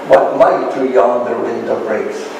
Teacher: That is, a verse consisting of 5 iambic feet in a combination, and an iambic feet is a combination of 2 syllables. The first syllable unstressed, the second syllable stressed.